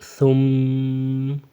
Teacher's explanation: میم کے اوپر یہ شد ہونا، تو اس کو یہ کرتے ہیں غنہ کرتے ہیں، ٹھیک ہے، میم کی آواز کو تھوڑا کھینچ کر پڑھتے ہیں۔ ثم، میم زبر ما، ثم، ٹھیک ہے، وقفاً پڑھیں، وقفاً ثم، ابھی وقفاً میں میم پہ کیا ہوگا، غنہ ہوگا، ٹھیک ہے، میم پہ غنہ ہوگا وقفاً میں بھی، ثم، صرف زبر نہیں پڑھیں گے۔